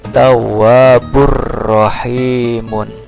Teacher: Nah, ini domatain, di depannya huruf ro. Ro itu termasuk ke dalam huruf idgham bila gunnah. Hurufnya cuma ada dua idgham bila gunnah itu, yaitu lam dengan ro. Jadi ini adalah hukum bacaan idgham bila gunnah.